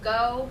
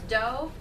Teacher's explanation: go is produced in the back of the mouth do is produced in the front of the mouth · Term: fronting